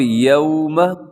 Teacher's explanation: یہاں پہ یوم واولین ہے، اس کو نرمی سے ہم نے پڑھنا ہے۔